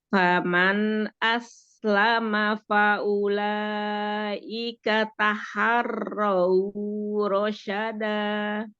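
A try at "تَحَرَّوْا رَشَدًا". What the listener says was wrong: Ya, tapi nggak terlalu lama. Taharraw rasyada. Cukup. Lin ya. Lin itu dia lebih dari 1 harokat tapi nggak sampai 2 harokat. Taharraw rasyada.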